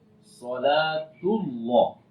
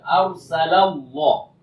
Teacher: tetap lamnya dibaca dengan tebal karena didahului oleh harakat fathah dan dhamma